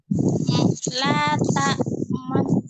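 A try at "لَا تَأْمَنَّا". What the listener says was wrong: Untuk ma-nya masih senyum. Man.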